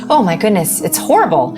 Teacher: the reason why I will accidentally go into fry is because we're literally clenching our vocal cords and they cannot get enough breath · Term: vocal fry